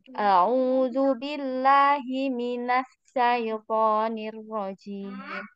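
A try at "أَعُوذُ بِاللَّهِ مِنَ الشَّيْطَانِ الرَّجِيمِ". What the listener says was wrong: Nggak boleh putus ya. Kalau di tasdid huruf shin ini tidak putus, suaranya nggak putus.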